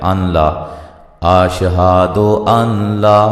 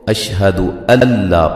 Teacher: یہ نون ساکن کا جو ہے وہ ادغام ہو جائے گا لام کے اندر، ٹھیک ہے؟ ادغام تام یا ادغام بلا غنہ، ٹھیک ہے؟